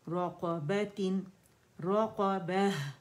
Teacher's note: रक़बतिन, पॉजेज नहीं देने हमने, मखरज पे अलग अलग जाना है, समझा करें, ठीक है ना, पॉज नहीं देना कहीं ना, आवाज़ टूटनी चाहिए। रक़, दोनों में इस्तिआला है, ज़बान की जड़ ऊपर जाएगी। रक़बतिन, रक़बह, ठीक है, ये आवाज़ आनी चाहिए, हम्स की क्लियर आवाज़ हो।